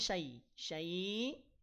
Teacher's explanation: Ya Sukun sebelumnya fathah maka pastikan ini adalah madlin panjangkan kemudian hamzahnya sukun maka bunyinya jadi terputus suaranya ya